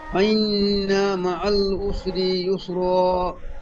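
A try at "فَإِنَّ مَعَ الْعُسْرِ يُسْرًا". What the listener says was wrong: সুন্দর, মাশাআল্লাহ, খুব সুন্দর।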